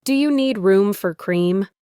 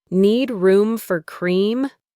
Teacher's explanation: The do you is completely dropped.